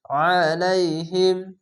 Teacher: আইনটিকে মোটা করে গলা চিপ করবেন